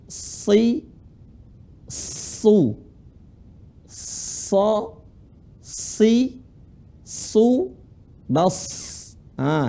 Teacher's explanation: Sa sukun itu ujung lisan ketemu gigi seri bawah. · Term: huruf sa sukun